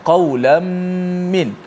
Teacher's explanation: Tanwin berjumpa dengan min. Maksudnya idgham ma'al gunnah, juga kena panjangkan gunnahnya.